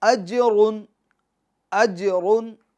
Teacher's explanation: जिम में कलकला भी करेंगे और रा को पूर्व पढ़ेंगे क्योंकि रा के ऊपर 2 पेश हैं।